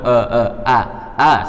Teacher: Huruf a mulut dibuka ini paling mudah akan tetapi kita ingat Hamzah itu tempat keluarnya yaitu tenggorokan pangkal